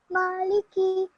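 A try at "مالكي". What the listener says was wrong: Good. Excellent.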